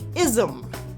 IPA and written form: ɪzm (I S M)